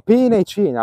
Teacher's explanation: la E più chiara come in pena e cena